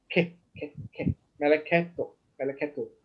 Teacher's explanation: it's a vocal schwa, it's a very faint E, very faint E, all right? And meaning that you pronounce it, but very, very fast.